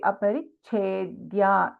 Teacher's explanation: इन छेद we have both अल्पप्राण च एंड महाप्राण छ